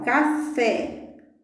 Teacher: O fé é a palavra mais forte, é a sílaba tônica.